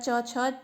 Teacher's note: तो जो च वर्ग का जो उच्चारण होता है, च छ, तो इसका जो स्थान होता है वो होता है तालु।